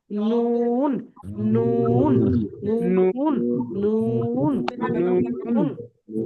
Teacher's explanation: ধারালো দাঁতের গোড়া থেকে সাথে লাগিয়ে উচ্চারিত হয় যেমন নুন দেখেন উপরে দাঁতের সাথে লেগে উচ্চারণ হবে এবং শেষের দিকে দাঁত থেকে জিভটা ছেড়ে নিচে আসবে দেখেন নুন নুন নুন নুন নুন বুঝতে পারছেন জি হ্যাঁ তারপরে